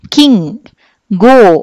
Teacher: సో ఇంకా ఆ వెనక్కి వెళ్ళి సాఫ్ట్ ప్యాలెట్ని టచ్ చేస్తే లైక్ కింగ్, గో అన్నప్పుడు నాలిక ఇంకొంచెం టర్న్ అయ్యి వెనకాల పార్ట్ని టచ్ అవుతుంది, వాటిని మనము వేలార్ అని చెప్పి డిస్క్రైబ్ చేస్తాం